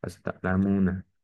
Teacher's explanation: pada huruf mu yang dibaca panjang dua harokat karena ada waw sukun ya, ini waw sukunnya sebelumnya adalah dhammah sehingga hukumnya adalah mat tabi'i.